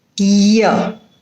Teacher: palatal sound is articulated by the front of the tongue against the hard palate